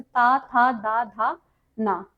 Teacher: जिन वर्णों का उच्चारण करते समय जीभ ऊपर के दांतों के पिछले भाग को स्पर्श करती है उनको दंत वर्ण कहते हैं।